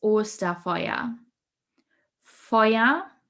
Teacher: The EU sound is pronounced oi, like in the word boy.